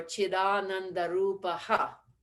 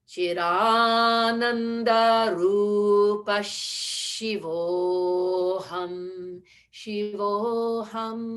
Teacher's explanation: But if we were to do it faster and we could do that line in one breath, the Rupaha needs to change to the Rupa sh, as though it were a double sh sound preceding Shiva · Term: Visarga Sandhi